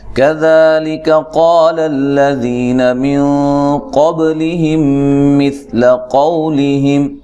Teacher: کاف کو باریک پڑھنا ہے، ذال کو نرم ادا کرنا ہے، لیکا کاف کو باریک، قاف کو موٹا الف مدہ ہے، للذی ذی یا مدہ ہے، نون کو لمبا نہیں کرنا.